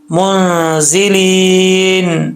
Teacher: آگے ہے منزلین، نون کے اوپر یہ جو منزلین کا نون ہے اس میں اخفاء ہو رہا ہے، یعنی ایک الف کی مقدار غنہ ہوگا، منزی، زا کے نیچے زیر ہے، سیٹی کے ساتھ پڑھا جائے گا